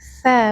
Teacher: Tsa ujung lidah menyentuh ujung gigi seri atas.